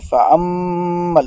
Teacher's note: vous avez ici غنّة à faire à cause de la shadda